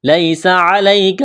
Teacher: لام یا زبر لئی، یا ساکن سے پہلے کیا ہے؟ زبر ہے، تو حروف لین یا ہے، اس کو کھینچنا نہیں ہے، جلدی پڑھیں گے نرمی کے ساتھ